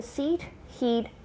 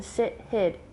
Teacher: the vowels in seat he'd differ from those in sit hid in two ways they have a slightly different quality and they are longer